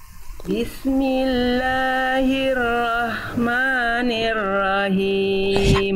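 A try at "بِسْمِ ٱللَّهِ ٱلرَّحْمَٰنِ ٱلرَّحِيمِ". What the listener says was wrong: Him, bukan him. Him, berbisik Bunda. H kecil, bukan H besar. Keluar bisikannya dulu dari tengah tenggorokan. Him.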